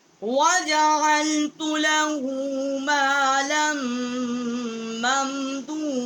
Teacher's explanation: ما لم، لام دو الف زبر میمان لم، اس کو ہم نے مشدد کیا ہے لام کو میم کے ساتھ، اور یہاں ہم نے غنہ کیا ہے